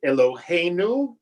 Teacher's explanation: You see that the trope mark is put at the end, right? Eloheinu, right? There it's on the penultimate syllable.